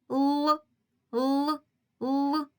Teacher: язичок впирається у верхні зубки заважаючи повітря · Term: приголосний звук